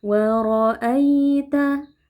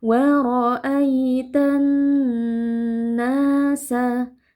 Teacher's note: ada ya sukun yang sebelumnya berharakat fathah. Ini merupakan bacaan lin. Ya kita baca dengan lembut.